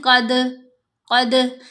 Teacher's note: قاف زبر دال ساکن، قد، قد ایکو آواز بننا، آواز کا پلٹنا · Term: قلقلہ